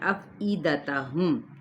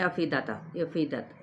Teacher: حمزہ کی زیر کو بھی واضح طور پہ ادا کریں، یہ نہیں افیدت وہ غلط ہو جاتا ہے۔